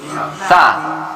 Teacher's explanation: Sa itu di ujung gigi. Sa, ujung gigi. Lidah gitu kita letakkan di ujung gigi.